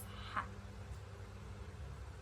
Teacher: Konsonan laringa ini dihasilkan oleh pita suara yang terbuka lebar sehingga udara keluar digesekkan melalui golapis.